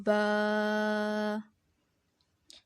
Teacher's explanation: دونوں ہونٹوں کے تر حصے سے با ادا ہوتا ہے. دونوں ہونٹوں کا تر حصہ یعنی اندر کی طرف جو دونوں ہونٹوں کے حصے ہوتے ہیں وہ تر حصے ہوتے ہیں، تو وہاں سے ادا ہوتا ہے با.